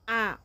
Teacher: বিবৃত স্বরধ্বনি মানে যে স্বরধ্বনি উচ্চারণ করার সময় মুখটা পুরাটা ওপেন হয়ে যাবে যেমন আ মুখটা সবটা ওপেন হয়ে গেছে অর্ধবিবৃত ধ্বনি মানে অল্প